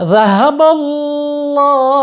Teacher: lam jalalah ya sebelumnya itu berharokat fathah yaitu banyak Fatah sehingga lamjalalah nya dibaca tafkhim tebal